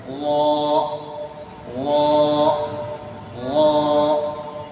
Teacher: র এর উচ্চারণ হবে জিহ্বার আগা তার বরাবরের সাথে উপরে তালের সাথে লাগিয়ে